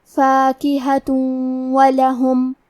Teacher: ادغام کا معنی ہے حرف کو حرف میں داخل کرنا، تو ہم تنوین کو واو میں ملا کے غنہ اور تشدید کے ساتھ یہ حکم کو ادا کریں گے